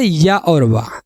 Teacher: इनके बोलने से मुख द्वार बहुत सकरा हो जाता है और हवा स्वर की भांति बीच से निकल जाती है। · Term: अर्ध स्वर